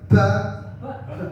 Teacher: banyak yang salah mengucapkan huruf ba itu pakai angin yang keluar